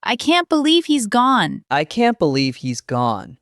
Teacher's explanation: with a slow, quiet, low voice for sad or shocking news